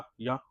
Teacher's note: तो दोस्तों जो या का या का उच्चारण स्थान है दोस्तों जो या का उच्चारण स्थान है यह है तालव्य क्या है तालव्य या बोलेंगे तो आपकी जो जीभ है दोस्तों वो तालू में लगेगी आगे की तरफ तालू में लगेगी